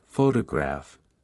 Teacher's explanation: in the word photograph the stress is on the first syllable